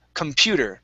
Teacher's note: The stress is on the PU